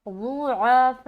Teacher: عین کا بھی خاص خیال رکھنا ہے کہ عین کو حلق سے نکالنا ہے